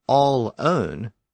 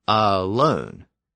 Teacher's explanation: the pronunciation of that l in the middle shifted from the end of the first syllable to the beginning of the second syllable